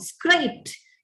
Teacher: Pa is a voiceless sound. Therefore, the realization of the past tense marker would be with a t sound. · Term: t realization